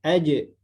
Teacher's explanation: Sifat yang pertama sifat jaharnya ada, sifat syiddahnya, kemudian istifal, ya infitah, kemudian juga sifat qalqalah ada ketika sukun aja. Tapi ketika anak kasih harokat ja, maka ada yang hilang sifat, yakni sifat qalqalah.